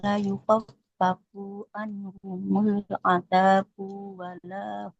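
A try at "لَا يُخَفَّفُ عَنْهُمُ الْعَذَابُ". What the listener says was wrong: La yukhaffafu. Fa-nya nggak boleh panjang. Al-azabu. Ba-nya juga nggak boleh panjang. La yukhaffafu anhumul azabu.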